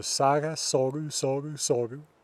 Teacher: the root vowel changes because the ending u causes u mutation of that a in the root.